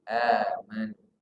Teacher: Di situ ada hamzah bertemu dengan alif. Amanu ini namanya a-nya mad badal, panjang 2 huruf.